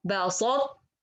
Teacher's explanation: So I will make the الطباق of ta and then I go for the natural ta. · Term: incomplete idgham